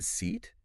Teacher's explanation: you're really like spreading your lips wide and tensing your tongue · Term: e e sound